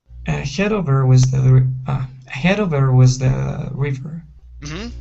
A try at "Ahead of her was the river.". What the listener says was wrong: Okay, very good.